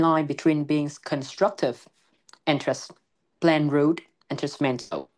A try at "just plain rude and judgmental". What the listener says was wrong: You might want to connect this these words together. It should be more like just plain rude and judgmental. Just plain rude and judgmental. So just plain rude, stretch the word out, and then and judgmental.